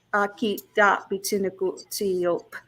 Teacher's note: the last part of that word, Aakitaapitsinikotsio'pa, the O with a glottal stop, PA